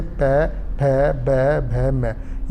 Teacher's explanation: जिन व्यंजन के उच्चारण में दोनों ओष्ठ यानी दोनों होठ, यानी कि हमारे जो मुख हम जब हम बोलते हैं हमारा मुख बिल्कुल बंद हो जाता है, यानी कि दोनों होठ आपस में मिल जाते हैं, और बंद होने के कारण सांस भी हमारा उस समय रुक जाता है, यानी कि सांस भी अवरुद्ध हो जाता है, तो उनको हम ओष्ठ्य व्यंजन कहते हैं।